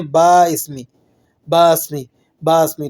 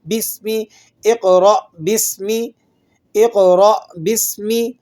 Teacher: با کو سین سے ملا کر با سین زیر بس میم زیر می، بسمی، اقرأ بسمی، اقرأ بسمی۔